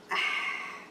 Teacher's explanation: The makhraj of ha, the middle of your throat.